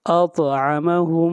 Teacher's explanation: طا کے اوپر قلقلہ ہوگا، آواز کو ہلائیں گے